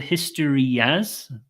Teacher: the Y and the a link together quite nicely